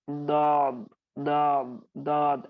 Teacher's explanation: जबान को हम दाल के मखरज पर ले चले जाते हैं और वहां पर मोटा कर देते हैं। तो ये दौद की जगह आप उसको दौद दौद दौद ऐसे अदा कर देते हो, ठीक है।